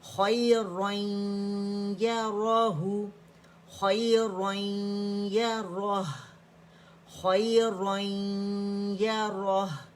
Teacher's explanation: یہاں ادغام ناقص ہم کر رہے ہیں کیونکہ تنوین کے بعد ہمارے پاس یا آ رہا ہے